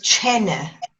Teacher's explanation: T before a slender vowel, though, becomes ch.